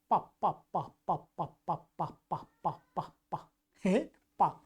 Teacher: तो पा का जो स्थान है वो ओष्ठ स्थान है और स्पृष्ट प्रयत्न है, स्पृष्ट प्रयत्न है इसका। तो स्पृष्ट प्रयत्न का अर्थात ये ओठों को मिलाकर के बोला जाता